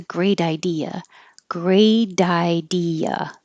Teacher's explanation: The T is connecting to the I. It's between two voiced sounds, so it changes to a D.